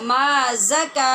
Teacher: یہ زا ہے جو سختی سے پڑھی جائے گی اور سیٹی کی آواز کے ساتھ